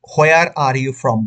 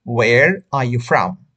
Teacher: ও দিয়ে উচ্চারণটা করবেন, ও, হো না, হোয়ার না